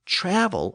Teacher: shifting the accent forward in travel to reflect a more traditional English pronunciation with the accent on the first syllable